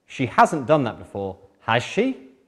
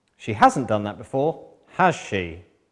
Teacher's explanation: Rising intonation pattern meaning, I'm asking a genuine question.